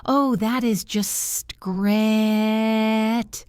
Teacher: they say it with a flat, low voice, they mean it is terrible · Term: Sarcasm